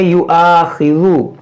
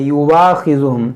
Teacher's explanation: دیکھیں اس کو ہم پڑھیں گے یؤاخذو, بعض لوگ کیا پڑھتے ہیں واو پڑھتے ہیں یواخذہم, تو یہ یوا نہیں پڑھنا ہے یو آ پڑھنا ہے, حمزہ پڑھنا ہے.